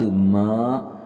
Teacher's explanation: یہاں پہ دیکھیں مد ہے میم کے اوپر اور اس مد کو ہم نے 3 الف کی مقدار لمبا کرنا ہے۔